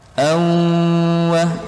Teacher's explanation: Fathatain atau tanwin umumnya bertemu dengan huruf waw itu hukumnya idgham bi gunnah. Panjangnya 2 harokat. Awwa, jangan lupa didengungkan.